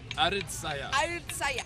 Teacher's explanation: with a glottal stop at the beginning and end